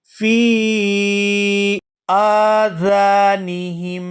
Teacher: یہاں یا ساکن ہے اور اس سے پہلے زیر ہے تو یہاں فا کو یا ساکن کے ساتھ ملاتے ہوئے کھینچ کر ادا کریں گے